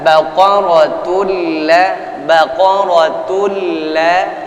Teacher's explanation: Innaha baqaratul la idgham bila gunnah, bunyi tun kalis sudah, nggak ada lagi bunyinya. Baqaratul la masuk kepada huruf yang diidghamkan, diidkhalkan, dimasukkan, yaitu huruf lamnya.